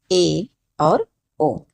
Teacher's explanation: जिन स्वरों के उच्चारण में मुख द्वार आधा बंद रहता है। ठीक है? पूरा नहीं बंद रहेगा। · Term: अर्ध संवृत स्वर